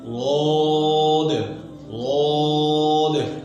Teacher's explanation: लौद के अदा करते वक्त जबान का दरमियान ऊपर के तालू से चिमट जाता है, यानी लिपट जाता है, जिससे ये हर्फ खूब मोटा होता है। लौद लौद। ठीक है जी, जबान का दरमियान ऊपर के तालू के साथ चिमट जाता है, यानी ऊपर उठाना है और जड़ को भी उठाना है। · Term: इतबार